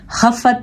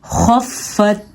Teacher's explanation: خا زبر فا, خف, فا زبر تا, فت, خفت. خا آ گیا حروف مستعلیہ میں سے, اس لیے اس کو ہم نے موٹا کر کے پڑھنا ہے. خفت نہیں پڑھیں گے, ہم کیا پڑھیں گے, خفت.